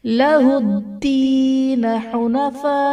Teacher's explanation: लहुद्दीन में दाल हर्फ कलकला मुशद्दद है, यहाँ पर खूब जमाव करेंगे। या साकिन से पहले जेर है, या मद्दह का कायदा होगा।